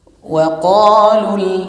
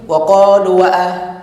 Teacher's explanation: kedudukan hamzah wasal ini biasanya tidak dibaca ketika di tengah kalimat, di tengah antara dua kata. Tapi dia dibaca ketika di awal.